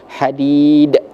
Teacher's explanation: Kalau kita wakaf berarti hukum bacanya yaitu qalqalah kubra yang mana pantulannya atau itu lebih terdengar lebih besar daripada qalqalah sugra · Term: qalqalah kubro